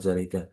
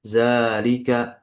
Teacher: ketika kita membaca zalika zanya dipanjangin seakan seperti ada alif. Karena kan di sini tbutu nutqan tetap dalam pengucapan alifnya. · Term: vokal panjang